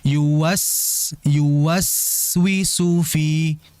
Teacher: Sin memiliki sifat rikah atau rakha. Yang sifat rakha ini bermakna mengalir jauh lebih panjang dibandingkan lam yaitu tawasut. Sehingga dialirkan dulu. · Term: rakhawa